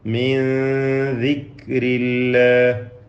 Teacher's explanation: മിൻ ദിക്രില്ലാഹ്, മിൻ എന്ന സാക്കിന നൂനിനെ ഇഖ്ഫാ ഹഖീഖി നൽകി അവ്യക്തമാക്കി മണിക്കുക, മറച്ച് മണിക്കുക.